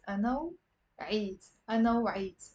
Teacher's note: rather than pausing after أنا and then saying وعيت, you can say أنا, pronouncing the w with it